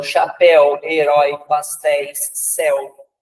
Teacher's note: terminadas com o som aberto no final de EI, OI e EL